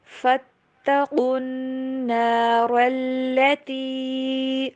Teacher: قاف اور را کو موٹا پڑھیں گے